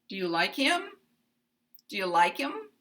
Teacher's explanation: we just go up at the end we have Rising intonation at the end